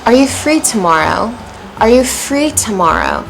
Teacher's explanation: Stress on tomorrow. Coming up. Rising intonation.